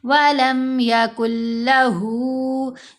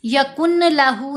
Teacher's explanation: نون کی آواز مرج ہو جائے گی لام کے اندر ہی، یعنی نون کی آواز علیحدہ سے سنائی نہیں دے گی. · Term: ادغام یرملون